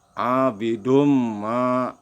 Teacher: Nah, kalau tasdid, nah ini tasdid itu huruf double ya. Contohnya ini mim sukun bertasdid, maka dibacanya ditekan, panjangnya 2 harokat.